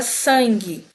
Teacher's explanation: Eu não tô falando esse u da palavra sangue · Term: dígrafo